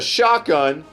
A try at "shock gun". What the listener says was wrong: Shock gun, not shot. You said shot.